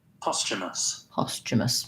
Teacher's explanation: kind of past sha posthumous um and then british posthumous postumus only difference in that first vowel they have a different ah vowel than the american english